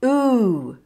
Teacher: long vowel sound OO, rounding your lips and moving your tongue back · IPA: uː